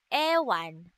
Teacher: Ang letrang A na nasa ayos ng dila na mababa at sa bahagi ng dila na sentral, ito ay binibigkas na A, ama, araw. At ang letrang E naman na nasa ayos ng dila na gitna at sa bahagi ng dila na harap, ito ay binibigkas na ewan.